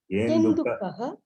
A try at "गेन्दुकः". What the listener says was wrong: If you say Genduk, it becomes Halanta. If you say Genduk, it will become Halanta, ending with consonant. It is